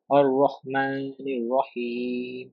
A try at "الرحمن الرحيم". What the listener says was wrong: You said Ar-Rahman Ar-Rahim. Is there Zabar? Fatha on the Alif? No. Is there Zabar or Fatha on the Alif? No. So we put it temporarily to complete the word, to complete the verse. Okay, that is called temporary zabar.